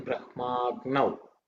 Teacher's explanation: It's a vowel, a, and a together form a longer a.